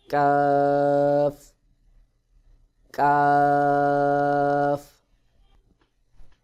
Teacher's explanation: জিহ্বার গোড়া থেকে একটু সামনে আগে বাড়াইয়া তার বরাবর উপরে তালুর সঙ্গে লাগাইয়া কাফ উচ্চারণ হবে